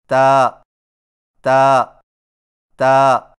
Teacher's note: تا کی ادائیگی میں زبان کی نوک کو ثنایا علیہ کی جڑ سے لگا کر باریک آواز میں پڑھیں، یعنی تا تا تا۔